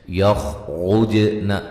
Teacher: نون مشدد پہ غنہ ضروری ہے، والا الف مدہ ہے، یخرجن خا کو موٹا، را کو موٹا، جیم پہ قلقلہ ، لام پہ مد جائز ہے، این نون ساکن کا ادغام